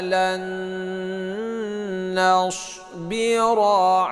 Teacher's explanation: Lan nun mati bertemu dengan nun. Ini berdengung dua harakat. Itu idgham bighunah ya.